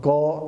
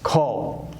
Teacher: Kha differs from ka only by one feature, and that is mahaprana. Ka is alpa prana, unaspirated, whereas kha is mahaprana, aspirated.